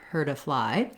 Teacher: that t because it links to the vowel sound turns into a flap it sounds more like a d · not saying the word heard i am still saying hurt but when i'm linking my t turns into more of a d i'm still going to be pretty short though her to fly